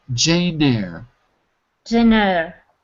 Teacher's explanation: You pass the N to... You pass the letter N to the next word. So it becomes Nair. Nair. Nair. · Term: the link